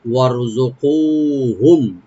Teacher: ওয়ার, ওয়া open রাখবেন, রাটাকে এখানে মোটা করতে হবে ডিপ করে, ওয়ার জুকু, কফটাকে একালিফ টানবো, হুম এখানে মিম সাকিন এজাহার করবো আমরা